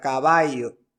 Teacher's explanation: el yeísmo consiste en pronunciar la doble l como y